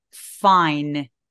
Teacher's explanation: 그래서 fine 아니고 fine 이라고 바람 소리가 먼저 새어 나오고 있는 느낌인 거예요